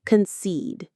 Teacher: The stress is on that second syllable, seed